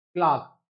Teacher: ई और आर मिलकर के यहाँ आर जो है उसका साउंड जो है ओमिनेट हो जाता है, उसका साउंड जो है सप्रेस हो जाता है, साउंड जो है वो हिडन हो जाता है, साउंड नहीं आता है आर का